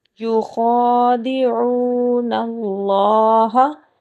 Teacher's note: خا کو پر موٹا کر کے پڑھا جائے گا، عین کے اوپر پیش ہے، اس کے بعد واو ساکن ہے،